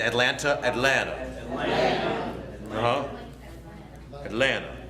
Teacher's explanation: Cut that last T